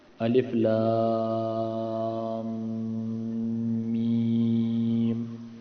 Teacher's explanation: یہاں پر دیکھیے کہ الف اور پھر لام میں بھی مد کریں گے، ٹھیک ہے، اور لمبا ہوگا. میم تک آ جائے تو غنہ کریں گے، غنہ یعنی ناک میں آواز لے جائیں گے. پھر میم میں بھی ہم مد کریں گے.